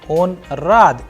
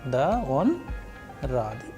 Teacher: So here if you see that the first one, when I am asking a question, on rad, is he happy? So I am asking a question, the pitch of the sound is going higher